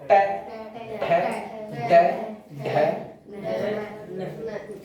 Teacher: just ऊपर वाले दांत है ना उसके सामने भिड़ेगी अब जीभ